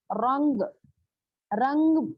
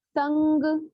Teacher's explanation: इख्फा, नून साकिन और तनवीन में जो नून साकिन छुपा हुआ होता है उसको गुन्ने के साथ दो हरकत तक पढ़ने को इख्फा कहते हैं